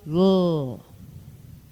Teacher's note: of the tongue toward the soft palate raise the soft palate release the breath stream over the sides of the tongue making a voiced lateral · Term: lateral sound